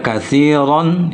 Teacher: kathiron itu bunyinya tetap ditafkhimkan atau ditebalkan bunyinya